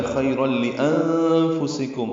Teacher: را پر پڑھیں گے، را کا لام میں ادغام ہوگا، یہ ادغام کامل ہے۔ خیرا لانفسکم، نون ساکن پہ اخفا ہے، نون ساکن کے بعد فا کی وجہ سے۔